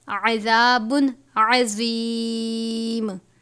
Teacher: زوا کو پر کر کے پڑھیں گے، عین کو باریک پڑھتے ہیں